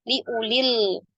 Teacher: wawnya kita anggap tidak ada ya. Jadi tidak dipanjangkan tapi tetap dibaca pendek.